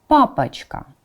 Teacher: the place of articulation is the same but the quality The Voice like the measure of voice is different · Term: voiced and voiceless consonants